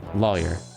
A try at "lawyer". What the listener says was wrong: Yours is just a little bit more closer to saying liar. See, the way I'm pronouncing it is basically like this. You slightly lean towards that, though it's not actually what you're saying.